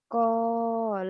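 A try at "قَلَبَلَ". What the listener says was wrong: La yang kedua pendek.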